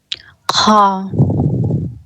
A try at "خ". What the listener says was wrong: منہ کو کھولیں. خا آپ گول آپ جو پڑھ رہے ہیں نا، منہ پورا کھل نہیں رہا ہے، پورا منہ کو کھولیں آپ. خا. کھکھارتے ہوئے. تھوڑی سی کھڑکھڑاہٹ کی آواز آئے گی.